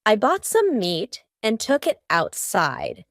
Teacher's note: the word outside has a t in the middle but because this word is kind of two words put together out inside we're going to have a stop there in the middle · Almost each of these words that end in T have a stopped T. · For each of those T's, my tongue is stopped at the top of my mouth.